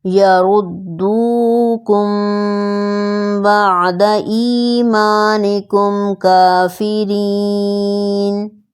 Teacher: یہاں مثال میں پہلے میم ساکن کے بعد با ہے تو اخفاء شفوی کا رول آیا